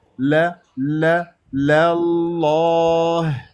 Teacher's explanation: لما كان عندك صوت اللام اللام مفتوحه راح تنتقل الى اسم الجلال الله الله راح تفخم اللام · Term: اللام مفخمه